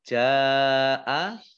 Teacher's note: Ja'a jim fathah alif mat tabi'i, tetapi karena bertemu dengan huruf hamzah dalam satu kata atau satu kalimah, maka menjadi mad wajib muttasil, dibaca panjang 5 harokat.